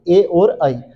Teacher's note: ए और ई कंठ और तालू के साथ बोले जाए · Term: कंठ तालू